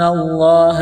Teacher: ہے۔ وَإِن تُخَالِطُوهُمْ فَإِخْوَانُكُمْ وَاللَّهُ يَعْلَمُ الْمُفْسِدَ مِنَ الْمُصْلِحِ، واللہ، لفظ اللہ کے نام سے پہلے زبر ہے، لفظ اللہ کے نام کو موٹا کرنا ہے